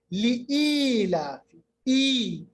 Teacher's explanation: ای ایک الف کے برابر، یہ مد اصلی ہے. اب آپ کو یاد رکھنا چاہیے کہ اس کو ہم نے لمبا کیا ایک الف کے برابر کیونکہ اس پہ مد اصلی ہے.